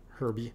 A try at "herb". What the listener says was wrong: In America, we don't pronounce the H. In herb, we just say herbs.